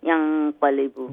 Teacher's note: Next one is qaf is ikfa letter. So when I read the noon, it will be nasal, kamil gunna, light nasal sound.